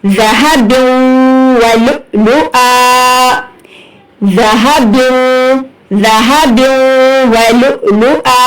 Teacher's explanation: جب ہم وقف کریں گے تو ایک زبر جو ہے وہ حذف ہو جائے گی اور ہمیں ایک الف کھینچ کر پڑھنا ہے